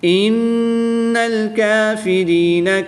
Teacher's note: نون مشدد میں ہمیشہ غنہ ہوتا ہے تو یہاں پر غنہ کر کے پڑھیں گے